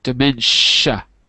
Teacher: Yeah, the TI is a sh.